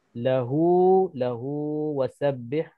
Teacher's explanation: Hu di sini adanya huruf mad dan selepas huruf mad ini tak ada hamzah maka jadi mad silah qasirah, baca 2 harakat. Okey, wasabbihhu di sini tak ada mad silah qasirah sebab tak ada huruf mad tak ada.